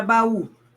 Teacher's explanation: Baú é uma oxítona porque a sílaba tônica é a última.